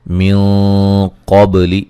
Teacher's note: نون ساکن کا موٹا اخفا ہے ، قاف کو موٹا ادا کریں گے، با پہ قلقلہ کریں